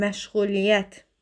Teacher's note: Məşğuliyyət sözündə y-nın biri düşəcək. · Vurğu 4-cü hecanın üzərindədir